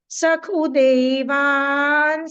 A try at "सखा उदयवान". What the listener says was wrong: सखा उदयवान, पूरा ख है बच्चे। सखा उदयवान।